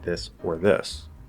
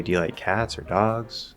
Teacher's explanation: if we rise instead of falling to close the list it feels more open